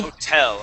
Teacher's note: The word hotel, the accent is at the end on that E.